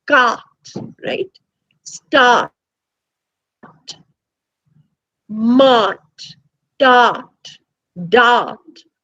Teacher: you have in words like cart right start mart dart dart all of them have the long ah and all of them are spelt with an r right but the r is not actually pronounced · ah involves that the back of the tongue is just raised slightly